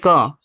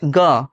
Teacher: इसको बोलने में हमारे मुंह से कम हवा निकलता है तो होता है अल्पप्राण